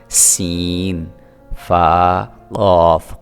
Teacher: قاف حروف قلقلہ میں سے ہے، اس کو آپ نے ابھار کے پڑھنا ہے۔ · سین میں سیٹی کی تھوڑی سی آواز پیدا ہونی چاہیے۔